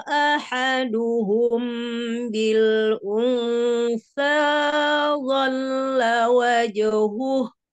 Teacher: kedua bibir bertemu tapi tidak ditekan hanya menempel saja jadi supaya terdengar samarnya atau ikhfanya